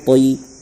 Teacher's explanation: اس کے بعد نیچے دیکھیے، طیرا ابابیل، طا زبر طی، یا ساکن سے پہلے طا پر زبر ہے، اس لیے یا لین ہوگا۔ یا لین کو نرم آواز کے ساتھ جلد پڑھیں